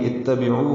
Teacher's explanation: عین وسط حلق سے نکالیں گے اور 2 حرکات لمبا کریں گے